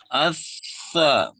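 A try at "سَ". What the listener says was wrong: Desisnya terlalu kenceng ya. Asa. Nah, itu kayak sin. Asa. Kurang digigit kayaknya ya. Kurang keluar, lidahnya kurang keluar. Kenapa desisnya kenceng?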